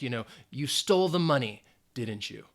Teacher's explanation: Again, if it's the rising intonation, yes or no. If it's a falling intonation, you're kind of like accusing somebody of something and you don't really need to respond.